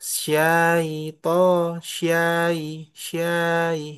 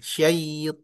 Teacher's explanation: Jadi agak cepat syait panjangnya di i bukan di a bukan di sy